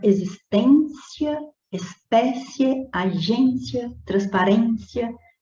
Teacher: observa que a sílaba tônica está sendo sempre a penúltima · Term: paroxítonas